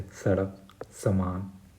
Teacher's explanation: और आखिरी में छोटा सा जिसे बोलते हैं, जिसे दांत से बोला जाता है, दंत स